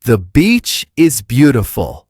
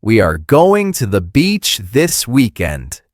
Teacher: When you practice, exaggerate the clear version. Make the vowel a little longer and smile slightly when you say beach.